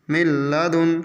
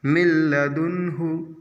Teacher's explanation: نون ساکن کے بعد لام ہے تو لام پہ ملائیں گے تو، لیکن اخفاء اور گنہ نہیں کریں گے، مل پڑھیں گے بس ڈائریکٹ۔ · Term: ادغام بلا گنہ